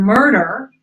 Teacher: When it does get the emphasis, as in the word murder, where the second syllable is a little schwa, but the first syllable gets an energy punch